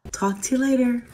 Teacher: to is pronounced with a reduced schah or a vowel it will sound like T talk to you later U is